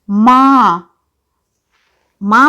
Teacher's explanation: बोलते समय उनका स्वर मुंह और नाक दोनों से निकल रहा है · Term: अनुनासिक